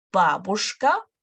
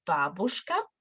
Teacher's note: Бабушка, stress on the first syllable